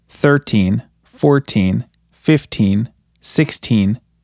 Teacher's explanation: when counting we usually pronounce the teen numbers with more emphasis on the first syllable